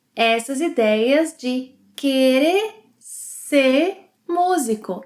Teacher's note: If you listen carefully, you'll notice that omits the final R sound in verbs.